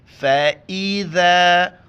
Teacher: فَإِذَا ذال کے وقت زبان باہر نکالنا ہے.